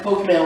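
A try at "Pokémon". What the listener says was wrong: Don't add the A to Pokemon. Yeah, you said You said Pokemon.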